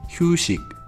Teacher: la sílaba shi, que no se pronuncia como si, se pronuncia como shi